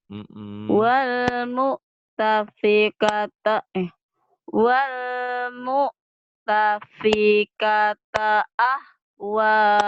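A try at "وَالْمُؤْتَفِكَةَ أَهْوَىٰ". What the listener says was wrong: Hak dada. Dadanya mana? Kayak masuk angin. Belum. Wal mu'tafikata ahwa. Hutang shin, sekarang hutang ha. Kayak orang masuk angin. Ahwa.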